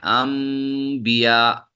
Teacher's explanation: آسانی سے ادا کرنے کے لیے نون کو میم سے بدل دیتے ہیں